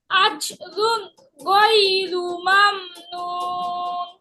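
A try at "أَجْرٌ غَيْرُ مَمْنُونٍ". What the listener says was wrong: আজরুন, কলকলা। আজরুন গায়রু মামনুন।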